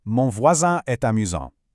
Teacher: Notice how voisin ends in a nasal an sound.